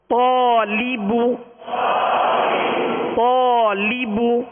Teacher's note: الف سے پہلے والا حرف پر ہے، اس لیے الف کو پر یعنی موٹا پڑھیں گے